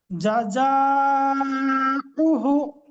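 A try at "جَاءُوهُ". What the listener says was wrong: হাটা টান হবে, হার উপরে উল্টা পেশ আছে।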